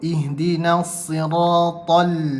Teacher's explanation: Kalau idgham dia tak ada sebutan lam tu. Ihdinas, dia terus pergi sad.